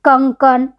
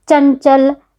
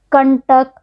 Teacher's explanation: इनके उच्चारण में नाक से अधिक हवा निकलती है, मुंह से कम। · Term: अनुस्वार